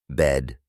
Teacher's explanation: El primer sonido es similar a la E en español, pero un poco más corta y rápida. Se pronuncia con la boca abierta y la lengua en la parte media de la boca, cerca de los dientes inferiores.